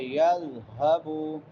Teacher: لم یذهبوا یذال نرم حروف میں سے ہے، نرمی سے ادا کریں گے. یذهبوا ہا اقصی حلق سے، حلق کے آخری حصے سے جو سینے کے ساتھ ملا ہوا ہے